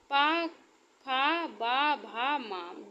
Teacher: पा फ बा भा मा दोनों ओठों से बोले जाते हैं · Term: ओट